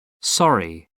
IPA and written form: ˈsɒri (sorry)